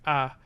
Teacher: a low central vowel like ah